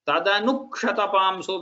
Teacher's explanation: Tadanu kshatapamsu, when you say it, you have to pronounce it in such a way that there is an extra kakara here, like as if there is an extra half ka